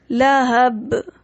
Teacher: با کو ساکن کرتے ہوئے با پہ قلقلہ ہوگا